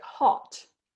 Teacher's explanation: really nice and back really nice and round really nice and open